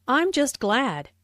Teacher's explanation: Notice the stress on glad. Just is used for emphasis before an adjective here.